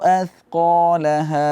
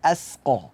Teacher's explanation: Athqa, sa itu jangan tertukar dengan sin. Kita baca, kita letakkan ujung lidah berada di bawah gigi seri. Jangan kita baca asqa.